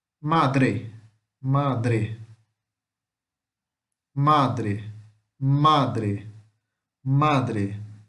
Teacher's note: a sílaba mais forte de madre é o ma e não o dre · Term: paroxítona